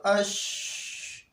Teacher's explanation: تفشی کا مطلب ہے، اس کا معنی ہے پھیلنا، اور اس کا مطلب یہ ہے کہ اس کی ادائیگی میں آواز منہ کے اندر پھیل جاتا ہے، اور یہ صورت صرف شین میں پایا جاتا ہے. ہم جب شین کو ادا کرتے ہیں تو اس کی ادائیگی کی صورت میں آواز منہ کے اندر پھیل جاتا ہے. مثلا حمزہ شین زبر اش، تو یہ آواز جو ہے وہ منہ کے اندر پھیل جاتا ہے.